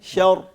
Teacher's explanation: تو ہم نے را کو موٹا پڑھنا ہے